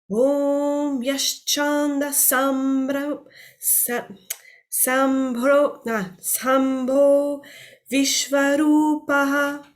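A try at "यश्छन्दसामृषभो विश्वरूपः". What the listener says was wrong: And the reason why you fell off was because you didn't do the dirgha on the sam.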